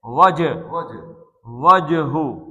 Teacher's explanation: اب یہ جیم کا کلکلا کرنا ہے، وجہو، اور ہا کو سینے سے نکالنا ہے